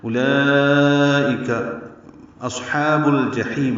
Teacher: ہا وسط حلق سے ادا ہوگا، دو حرکات لمبا کریں گے. یہ باریک پڑھیں گے، با کو الجحیم کے لام سے ملا دیں گے، اظہار قمری ہوگا.